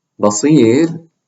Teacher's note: It's preceded by a waw. Basir, the ra is light if we're stopping on this ra